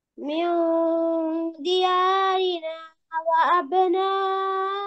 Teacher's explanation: নুন পড়া হবে না হ্যাঁ নুনের আওয়াজ হবে না নুন গোপন থাকবে